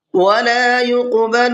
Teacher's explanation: قاف کے اندر قلقلہ کرنا ہے